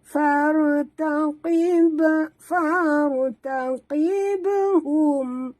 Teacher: tekan lantunkan pada ba yang mati di tengah kalimah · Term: Qalqalah surah